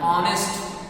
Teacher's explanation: In the sentence, H is silent when the word honest is pronounced.